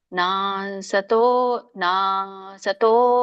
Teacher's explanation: ನಾ ಎಳಿಬೇಕು ಯಾಕಂದ್ರೆ ಇಲ್ಲಿ ದೀರ್ಘ ಇದೆ